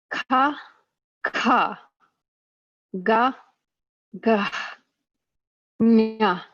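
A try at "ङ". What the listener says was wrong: Good, except for the last one. The last one, what I heard was nya, which is it's supposed to be nga. Open your mouth more and use the back of your tongue. Nga. Yes, it should sound nasal, There should be a vibration here. Nga. Nga. Nga. Nga. You should feel it right here. Nga. Nga.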